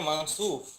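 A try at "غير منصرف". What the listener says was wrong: না, মানসুব ঠিক নাই, এখানে মুনসারিফ হবে, র হবে, অ না এটা। শুকরান আখি, এটা মানসুব হবে না, মুনসারিফ হবে, র দিতে হবে এখানে।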